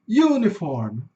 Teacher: Esse u é um longo, então ele vai ter um sonzinho de iu